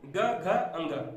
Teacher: इनमें गले में कंपन होता है, इसलिए ये घोष व्यंजन कहलाएंगे